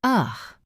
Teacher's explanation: It is the most common sound in the English language, and yet it is the sound that is ignored the most in writing. The schwa sounds like ugh. It is a very lazy sound. It happens in unstressed syllables.